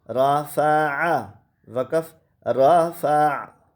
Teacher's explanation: وقف کی حالت میں بھی یہ را موٹا ہے، اور ملاتے وقت بھی یہ را موٹا ہے